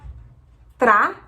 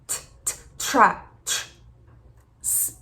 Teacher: O T, quando estiver na primeira sílaba, ele normalmente é aspirado. Então a gente não fala tra, a gente fala t, t, tra.